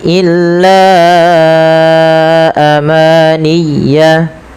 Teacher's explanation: Panjangkan la sepanjang empat atau lima harakat. Karena pada lafal bacaan la di sini ada mad jaiz munfasil, yaitu mad yang wajib kita panjangkan ee empat atau lima harakat dalam riwayat Imam Syatibi.